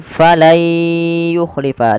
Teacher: Diganti suara nunnya menjadi suara ya